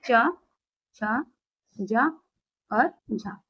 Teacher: स्पर्श संघर्षी व्यंजनों की संख्या सिर्फ और सिर्फ चार है